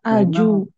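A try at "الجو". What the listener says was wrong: Harokatnya, harokatnya. Bukan di fathah, di fathah, bukan di domah, di fathah. Jimnya di fathah. Ya, alja'u.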